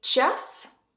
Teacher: in час, the letter A is stressed, so it gives the sound A.